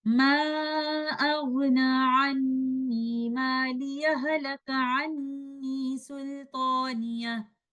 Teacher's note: we will merge the sakin letter ha of the word maliya into the voweled letter ha of halaka upon joining the two verses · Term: idgham mutamathilan saghir